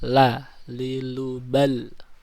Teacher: Lam condong keluar atau ke ujung lidah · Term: al-inhiraf